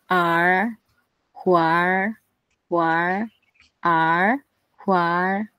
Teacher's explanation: R-nya itu kayak lidahnya itu dipendek. Dia agak ke belakang gitu loh lidahnya. Mundur ke belakang R. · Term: vokal retroflex